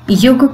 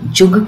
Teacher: ऐसे तत्सम शब्द हैं जिनमें य है, लेकिन वो उच्चारण की सुविधा के चलते तद्भव होकर ज के रूप में उच्चारित होते हैं।